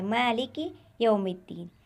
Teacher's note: یہاں پر بھی کاف باریک ہے اور اس کا مخرج زبان کی جڑ یعنی سخت تالو پر ٹکرا رہی ہے · یہاں پر جو کاف ہے وہ باریک ہے اور اس کا مخرج زبان کی جڑ یعنی جب سخت تالو پر لگے تو یہ حرف ادا ہوتا ہے، یعنی یہ حرف باریک ہے، یہاں پر بھی حرف باریک ہے۔ یہ کاف موٹا نہیں پڑھتے ہیں بلکہ زبان کی جڑ کو تالو کے سخت حصے سے لگا کر ادا کریں گے اور کاف باریک ادا کریں گے۔